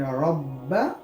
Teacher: रा पर ज़बर की हरकत है, तो इसको रा को हम पुर पढ़ेंगे